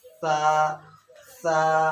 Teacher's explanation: এই সাকে শা দিয়ে পড়বো না, সাকে হালকা ভাবে উচ্চারণ করতে হবে।